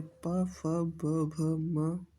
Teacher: ओष्ठि व्यंजन जिन वर्णों का उच्चारण ओठों से होता है उन्हें ओष्ठि व्यंजन कहते हैं।